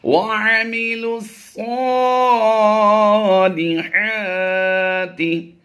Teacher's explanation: اس لام کو ہم نے اس صاد کے ساتھ ڈائریکٹ ملانا ہے. لام صاد پیش لس کی آواز دیں گے.